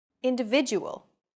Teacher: The stressed syllable vi in individual is deemed more important, so it's pronounced longer than all other syllables.